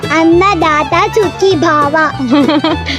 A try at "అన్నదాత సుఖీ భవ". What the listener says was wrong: భావ కాదు భవ.